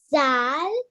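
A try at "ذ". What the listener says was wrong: No, it's not zal. Zal is this. When it's a circle one, it's zal. Okay, it's not zal.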